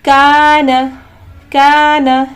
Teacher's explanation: الف مدہ ہے، اب یہاں پر ہمیں 2 سیکنڈ میں کھینچنا ہے